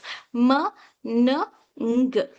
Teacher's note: Nasals, air flows through the nose instead of mouth, m, n, ng. Next, lateral, air flows around the slides of the tongue, l.